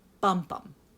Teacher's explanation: made up of a stressed syllable followed by an unstressed syllable